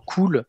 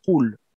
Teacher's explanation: elle est un peu plus en arrêt, en retrait que le K qu'on prononce nous dans cool. En fait, en arabe, au lieu de dire cool, si je mettais cette lettre, ça donnerait un cool, tu vois. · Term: K emphatique